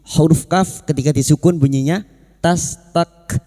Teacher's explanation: perhatikan huruf kaf sukun yang memiliki sifat hamas dan syiddah.